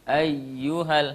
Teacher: hanya tekanan tanpa dengungan. Ya, ditekan saja tanpa dipanjangkan.